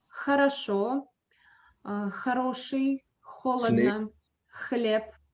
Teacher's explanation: In English, we have a very soft sound like, so it's like breathing. And in Russian, it's harder. It's not ha, it's h. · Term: Russian sound Х